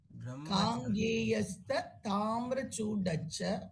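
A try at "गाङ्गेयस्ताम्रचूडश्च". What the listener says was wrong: சேர்த்து காங்கேயஸ்தாம்ரச்சூடச்ச ஆக்சுவலி தமிழ்ல வந்து ஸ்பேஸ் வர வேண்டாம் அந்த இடத்துல.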